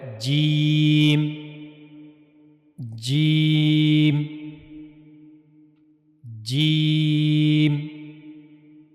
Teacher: जीम को अदा करने के लिए जबान का दरमियानी हिस्सा और मुंह का ऊपर वाला हिस्सा इस्तेमाल होता है।